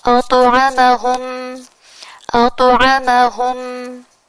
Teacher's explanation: تو ساکن ہے تو اسے قلقلہ کے ساتھ ادا کریں گے